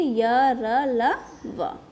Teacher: अंतस्थ व्यंजन। इन व्यंजनों का उच्चारण करते समय जीवा मुख के किसी भी भाग को पूरी तरह स्पर्श नहीं करती